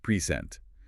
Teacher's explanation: Stress on the first syllable for both the gift and the state of being here.